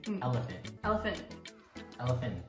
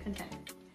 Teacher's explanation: we don't say ts we just say the n sound instead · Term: silent t